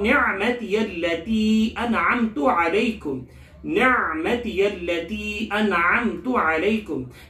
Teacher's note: یہاں نعمتی التی کو دیکھیں کہ عین کا جو حلق کا حصہ ہے درمیانی حصہ ہے، یعنی عین کو جہاں سے ادا کرنا ہے اس کا مخرج ہے وہ حلق کے درمیانی حصے سے ادا کریں گے۔ التی کی لام کو سختی سے پڑھیں گے تشدید کی وجہ سے، اور تی کو کھینچ کے پڑھیں گے۔